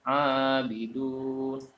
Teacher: mad asli atau mad tabi'i karena ada fathah berdiri, panjangnya adalah 1 alif atau 2 harokat